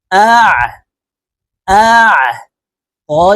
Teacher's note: আইনের মাখরাজ হলকের মধ্যখান থেকে হবে